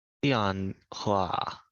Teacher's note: press a little harder with fourth tone